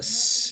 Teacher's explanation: s is a voiceless fricative alveolar sound